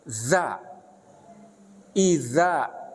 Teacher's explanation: ujung lidah itu ditempelkan kan ke gigi seri atas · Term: makhraj huruf, makhraj huruf za